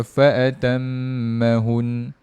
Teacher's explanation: dia tak dengung saja, dia dengung satu harakat je